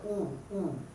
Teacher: ऊ को बोल के दिखिए, मुख का वृत्त की तरह बनता है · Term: वृत्तमुखी